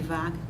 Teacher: já o fonema V é fricativo, como F, é labiodental, V de vaca. No entanto, ele é vozeado. Enquanto o F é desvozeado, o V é vozeado.